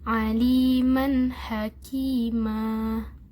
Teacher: mad iwad. Panjangnya 2 harokat.